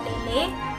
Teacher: posisi lidah meninggi sehingga agak mendekati langit-langit keras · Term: bunyi agak tinggi